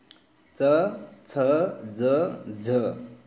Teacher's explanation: स्पर्श संघर्षी, स्पर्श भी होते हैं और जब मुंह से बाहर निकलते हैं तो संघर्ष करते हुए भी बाहर निकलते हैं, तो वो च वर्ग है, च छ ज झ।